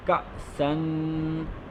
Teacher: حمزہ کے اوپر جزم ہے تو یہاں جھٹکا دیں گے